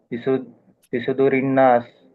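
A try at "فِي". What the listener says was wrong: ఇక్కడ దీర్ఘం తీయలేదు మీరు. అల్లది యువస్వీసు ఫీ. ఫీ.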